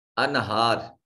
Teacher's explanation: नून साकिन के बाद हा हर्फ इजहार है, नून को जाहिर करके अदा किया जाएगा।